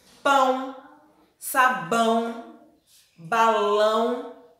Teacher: É o som que sai do nariz e da boca. Então, ao mesmo tempo. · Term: som nasal